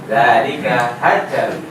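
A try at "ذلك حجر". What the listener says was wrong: Bukan hajar, enggak ada tasydidnya. Hajar.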